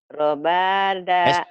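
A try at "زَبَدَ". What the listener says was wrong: Kok jadi kena ro lagi kan ini ada titiknya, Bu. Sama kayak itu.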